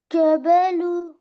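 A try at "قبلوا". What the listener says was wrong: काफ मोटा है, काफ बॉय है। गलती क्या हो गई कि काफ को मोटा नहीं किया और द और र को मोटा नहीं किया।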